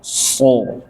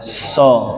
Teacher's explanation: tinggal suaranya dilempar ke dalam. So, tebal jadinya. Suara lempar keluar. So, tipis jadinya.